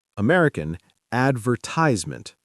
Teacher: American, advertisement, stress on the first and third syllables.